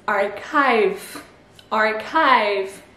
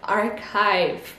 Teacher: Donc le CH devient un K et le I diphtongue